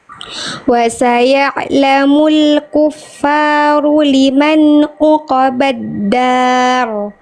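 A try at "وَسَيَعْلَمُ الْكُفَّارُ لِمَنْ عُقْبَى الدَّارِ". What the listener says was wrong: Tinggal ain sama ainnya kurang semut. Jadi masih agak kaku bunyi ainnya ya.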